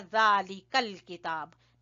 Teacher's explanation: अलिफ गिर जाएगा बीच में से चूंकि ये हमजातुल वसल है